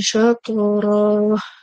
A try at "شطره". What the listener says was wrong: র এবার টান হবে না সাত র